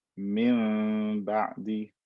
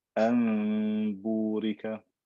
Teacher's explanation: convert the noon into meme and then do غنة with إخفاء on that meme once it turns into it.